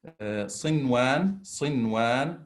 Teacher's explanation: We pronounce the noon as we exactly do with the izhar letter, clearly, no nasal, no hiding. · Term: idhar mutlaq